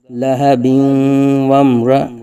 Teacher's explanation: واو میم زبر وم، میم ساکن ہے، میم ساکن کے بعد حرف با اور میم کے علاوہ را آ رہا ہے، تو یہاں اظہار شفوی ہوگا،